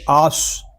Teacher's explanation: حمزہ صاد زبر آس. یہاں صاد جو ہے یہ حروف مستعلیہ میں سے ہے، اس کو پر پڑھیں گے. اور صاد یہ حروف صفیریہ میں سے بھی ہے، اس میں سیٹی کی آواز بھی آئے گی.